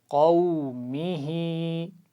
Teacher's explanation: میم کو لمبا نہیں کرنا، میم کے نیچے زیر ہے، ہا کے نیچے کھڑا زیر ہے، تو صرف اسی کی آواز کو کھینچ کر پڑھیں گے. اور شروع میں قاف کے مخرج کا بھی خیال رکھیے.